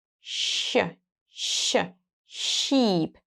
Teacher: When we say sh, the tongue raises to the soft palate.